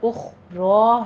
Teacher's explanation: را کو پر پڑھیں گے، را مفخم ہے ہماری، اور اخرا نہیں کہنا، اخرا ہے، ٹو کاؤنٹ کیجئے۔